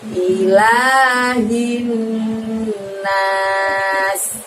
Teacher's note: I, ilah, lanya panjang 2. Hin, ditahan lagi 2 harokat atau 2 ketukan karena di depannya ada nun tasydid atau bacaan gunnah